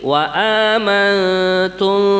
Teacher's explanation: Waqalallahu inni maum [melantun] inni maum lain aqomtumus shata wa aataitumuzzakata wa amantum birusulihum yang mendengong di sini waantum. Nah, pertama nun mati ketemu ta adalah ikhfa hakiki